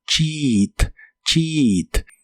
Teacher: Las letras EA de esta palabra se pronuncian como una I larga o doble y suena como cheat, cheat.